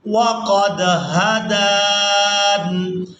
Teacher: دال کو کھڑی زبر کی وجہ سے کھینچتے ہوئے نون ساکن کے ساتھ ملائیں گے، نون یہاں پر وقف کی صورت میں ساکن ہو جائے گا۔